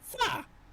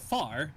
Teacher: he doesn't say the R